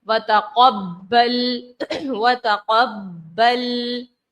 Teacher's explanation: با میں جماؤ پیدا کیا. کیونکہ حروف کلکلا تشدید ہے